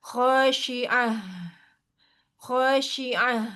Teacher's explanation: h-nya juga jangan jadi ke atas ya kalau ke atas nanti jadinya kan yang ha tengah gitu